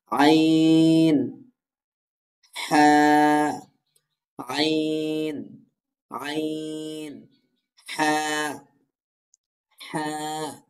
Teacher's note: অর্থাৎ এই আইনটা এবং এই হাটা, এই দুইটা অক্ষর ভালো করে উচ্চারণ করতে হবে। দেখুন, হলকের মধ্যখান অর্থাৎ কণ্ঠনালীর মাঝখান থেকে উচ্চারিত হয় আইন হ্যাঁ